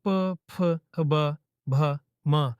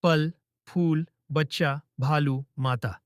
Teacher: पांचवा, औष्ठ्य, होठों से निकलने वाले वर्ण। जब बोलते हैं प, फ, ब, भ, म, तो होंठ मिलते हैं या कंपन करते हैं।